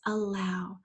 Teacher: again we have a schwa at the beginning we're going to spell that schwa with an A and then